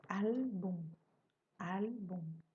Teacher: Terminado em M, a sílaba forte é al.